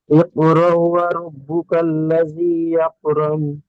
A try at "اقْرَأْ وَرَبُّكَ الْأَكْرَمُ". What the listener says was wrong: ইকরা ওয়া রাব্বুকাল আকরাম, এখানে আল্লাযী নেই, ওয়া রাব্বুকাল লাযী পড়ছেন, আল্লাযী নেই। اقرأ وربك الأكرم الذي علم بالقلم।